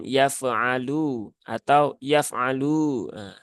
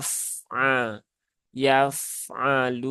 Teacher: Fa dia sifatnya salah satunya adalah rakhaah ya Maka jangan dipantulkan yafalu atau yaf'alu tetapi ya tunaikan saja sifatnya nya Yafa yaf'aluna · Luna ini lunya dua harakat ya mad asli